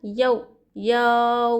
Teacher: यहां वलिन का फायदा हो रहा है। यहां पर जर्रा भी यऊ को नहीं खींचना चाहिए बल्कि जल्द अदा करना चाहिए नरमी से।